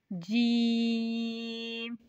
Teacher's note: जीम जुबान के दरमियान और तालो के दरमियान से अदा होता है